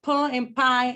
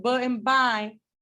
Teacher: But their difference lies in voicing, right? P is voiceless, B is voiced. So sometimes when we say that a sound is voiceless, a sound that is voiceless has a longer plosive puff of air.